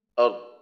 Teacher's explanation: দদের উচ্চারণে ধাক্কা লাগাইয়ে কলকলার মতো করা যাবে না, আরদ নরম ভাবে দদের উচ্চারণ শেষ হয়ে যাবে। যদি ধাক্কা লাগে তাহলে আরদ এভাবে একটু ফিরে আসে, তো এটা যেন ফিরে না আসে এটা খেয়াল করবো সবাই।